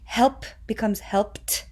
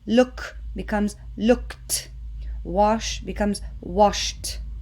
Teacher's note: And that's because p is a voiceless sound. So t is also voiceless.